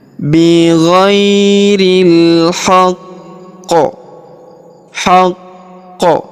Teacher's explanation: Huruf qaf atau qi di sini berharokat tasydid di ujung ayat ya. Maka kita tahan dan tekan terlebih dahulu sebelum berhenti, kemudian kita pantulkan ya, dan kita sukunkan terlebih dahulu, lalu kita pantulkan. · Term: huruf qalqalah